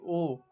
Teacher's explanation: ओ बोल के देखिए ओ ओ बोलिएगा तो आपका जो मुंह है वो मुख आधा बंद रहेगा। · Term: अर्ध संवृत